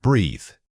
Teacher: This is a voiced example, meaning you must feel your vocal cords buzzing as you speak it. Don't just blow air.